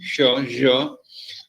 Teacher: produced by raising the front part of the tongue to the palate